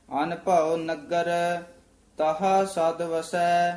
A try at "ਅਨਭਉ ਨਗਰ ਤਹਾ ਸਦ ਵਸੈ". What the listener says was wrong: ਇਹ ਜਿਹੜਾ ਅਨਭਉ ਹੈ ਨਾ, ਇਹ ਵਿੱਚ ਡੈਸ਼ ਜੀ ਦੇ ਕੇ ਉਚਾਰਨ ਕਰਨਾ। ਅਨਭਉ ਇਕੱਠਾ ਨਹੀਂ ਕਹਿ ਦੇਣਾ। ਅਨਭਉ ਨਗਰ ਯਾਨੀ ਨਖੇਰ ਕੇ ਜੇ ਪੜਨਾ ਸੋਹਣੇ ਜੇ ਢੰਗ ਨਾਲ। ਅਨਭਉ ਨਗਰ ਤਹਾ ਸਦ ਵਸੈ।